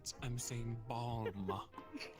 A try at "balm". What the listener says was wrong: You said without the L.